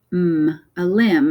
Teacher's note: the MB comes at the end of words. So the B is silent.